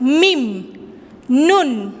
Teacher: Mim and nun nasal letters. This guna sound comes from the base of the nose. · Mim. Nun. দেখো নাকের মধ্যে দিয়ে শব্দ হচ্ছে।